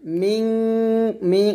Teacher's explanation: মিং এখানে অবশ্যই গুণনা করবেন, এটা হচ্ছে ইকফা গুণনা